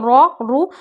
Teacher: رو پہ زبر اور پیش ہو، رو اور رو موٹے پڑے جائیں گے